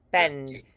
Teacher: Tongue is high in front for the vowel.